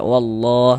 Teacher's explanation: Kalau kayak gini yang kita temui fathah maka lafaz Allahnya juga karena ada ada lafaz Allah sebelumnya ada harakat fathah e tanda baca fathah nih maka lafaz Allahnya dibaca tabkhim dibaca tebal